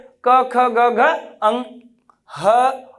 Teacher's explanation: ये कंठ से उच्चारित होते हैं · जब ये ध्वनियों का हम लोग उच्चारण करते हैं तो कहां पे प्रभाव पड़ता है? आपके कंठ पे पड़ता है।